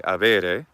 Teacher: avere without the H sound, with some kind of bilabial fricative for the letter B